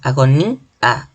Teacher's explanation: la mayor fuerza de voz está en la I, en la vocal débil, se convertirá en un hiato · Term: hiato acentual